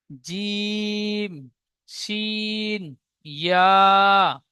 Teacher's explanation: 6 number মাখরাজ, জিভের মাঝখান এবং তার বারাবার উপরে তালুর সাথে লাগিয়ে উচ্চারিত হয়